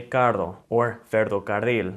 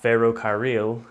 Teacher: if there's two R's together, then it's gonna always produce that rolling R sound